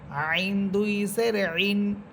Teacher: আইন, কণ্ঠনালীর মধ্যখান থেকে হায়ের মতো।